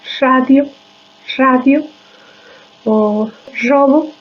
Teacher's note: Es como un silbido en la pronunciación de esta R. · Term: sibilación